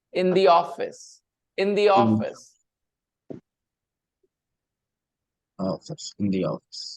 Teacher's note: two vowel sounds next to each other so put Y in between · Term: linking consonant